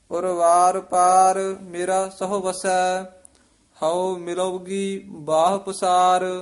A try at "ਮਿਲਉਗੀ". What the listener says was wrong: ਮਿਲੋਗੀ ਨਹੀਂ ਕਹਿਣਾ, ਮਿਲੋ ਦੇ ਵਿੱਚ ਡੈਸ਼ ਦੇ ਕੇ ਗੀ ਨਾਲ ਉਚਾਰਨ ਕਰਨਾ ਹੈ। ਪਾਠ ਇਕੱਠਾ ਹੀ ਹੈ।